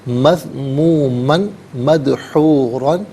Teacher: یصلاھا، یصلاھا مذمومن مدحورا، مذمومن میں میم پر 2 زبر کی تنوین ہے، اسے مدحورہ کے میم کے ساتھ ملا کر میم کی آواز کو غننے کے ساتھ ادا کریں گے۔